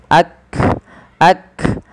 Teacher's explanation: Makhraj huruf kaf dari pangkal lidah kita. · kaf memiliki salah satu sifat yang pertama adalah syiddah. tertahannya suara dan hames dia mengadainya nafas kita.